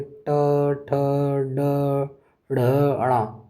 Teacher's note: ये जो वर्ण है ये मूर्धा से बोले जाते हैं। · ये जो पांचों हैं ये आपके मूर्धा से बोले जाते हैं। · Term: ट वर्ग